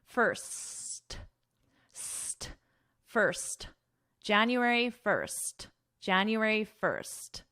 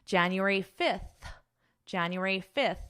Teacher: my tongue is not going between my teeth